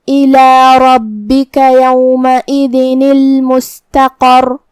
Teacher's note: را پہ زبر ہے تو را کا حکم ہے تفخیم، ہمیں را کو موٹی آواز میں ادا کرنا ہے. پھر با پہ تشدید ہے لہذا دو حرف کے برابر ہم حرف البا کو پڑھیں گے.